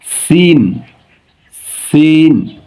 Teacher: উচ্চারণের স্থান জিহ্বার মাথা সামনের নিচের পেট ও আগার সঙ্গে লাগিয়ে সিন। এটা কিন্তু চিকুন করে বের হয়, খেয়াল করবেন।